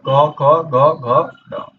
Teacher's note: इनका उच्चारण कंठ से होता है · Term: क वर्ग